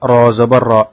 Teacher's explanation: হামজা জবর আ, র জবর র, আর র জবর, সে কারণে র মোটা করে উচ্চারণ করতে হবে